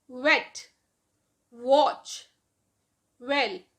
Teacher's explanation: lower lip and upper lip, both lips are involved when you pronounce the words like wet, watch and well